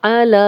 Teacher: लाम पे खड़ा ज़बर है, 2 हरकत लंबा करेंगे, ये या पढ़ने में नहीं आएगी